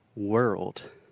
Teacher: This is difficult because we have the R sound, were, and we also have that tricky RL combination